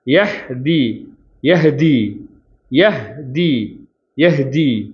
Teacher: ஹால சுக்குன் வச்சு நிறுத்தணும் அப்போ ஹம்ஸுடைய எழுத்து காற்று வெளிப்படும்